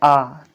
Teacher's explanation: जब आप बोलेंगे आ, तो आपका मुंह पूरा खुल जाएगा, पूरा मतलब पूरा खुल जाएगा। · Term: आवृत्ताकार